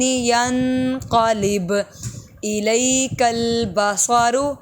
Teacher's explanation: الی میں حمزہ ای پڑھیں گے، علی نہیں پڑھیں گے۔